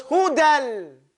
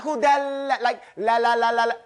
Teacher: Not off the tip of our tongue, pushing to the front, like English speakers, on the side of our tongue. When it's on over here, we touch the gums very light.